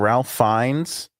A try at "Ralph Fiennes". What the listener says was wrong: It's spelled Ralph, but it's Rafe. Rafe Fiennes.